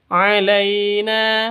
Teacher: la sifat lin lentur lemas tidak boleh disentak tidak boleh dipanjangkan alaina tidak boleh dibaca alaina atau alaina itu salah yang betul alaina begitu Panjang dua ketukan karena ada alif diawali dengan fat fathah mad asli atau mad thi.